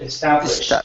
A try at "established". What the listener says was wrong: you're ending on the S H you're saying establish okay so I need a t at the very end